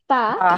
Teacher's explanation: আমাদের tip of the tongue, tip of the আমাদের টাং, হ্যাঁ পা। উপরের উপরের দাঁতের পাটির যে বেস থাকে ওইখানে গিয়ে টাচ করবে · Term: মাখরাজটা